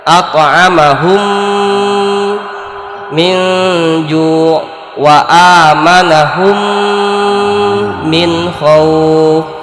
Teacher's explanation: Kalau di sini memasukkan mim yang pertama at'amahum ke mim yang kedua minju. Jadi yang bunyi itu dengungnya di mim yang kedua. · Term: idgham mimi